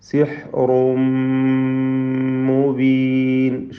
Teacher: സിഹ്റുൻ റായിന് തഫ്ഖീമാണ്, തടിപ്പിച്ചോദനം. തൻവീനിനെ പൂർണ്ണമായും മീമിലേക്ക് ലയിപ്പിച്ച് മണിക്കണം. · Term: ഇദ്ഗാം ബിഗുന്ന കാമിൽ